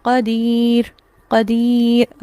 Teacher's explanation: را ساکن ہی پڑھا جائے گا لیکن اس کے ساتھ فوراً سے ہونٹوں کو گولائی کی طرف اشارہ کیا جائے گا. اسے کہتے ہیں وقف بالاشمام.